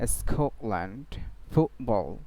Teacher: Vowel এর পরে কি হতে পারে, টি কে গ্লোটাল স্টপ পড়া যেতে পারে।